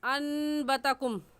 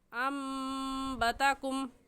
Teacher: तो छोटी सी मीम का मतलब ये है कि हम कायदा पढ़ चुके हैं कि नून साकिन के बाद बा आ जाए, नून साकिन के बाद बा आ जाए तो वहाँ पर इक़लाब होता है। इक़लाब का मतलब ये है कि उस बा को मीम के साथ बदल देते हैं और ऐसे पढ़ते हैं अम्बतकुम।